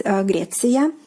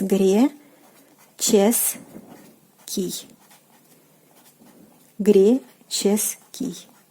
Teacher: you can see that the sound, the consonant ts is changed into the consonant ch.